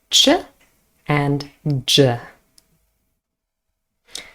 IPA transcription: tʃ